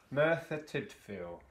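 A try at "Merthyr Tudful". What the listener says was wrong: It's a V, not an F, it's Merthyr Tydfil.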